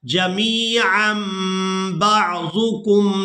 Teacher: تنوین میں جو نون کی آواز ہے اس کو میم کے ساتھ بدل کر ادا کرنا ہے. اس کی وجہ یہ ہے کہ تنوین کے فوراً بعد با آ گئی ہے تو یہاں پر اقلاب ہوگا، یعنی نون کی آواز کو میم کے ساتھ بدل کر ادا کیا جائے گا.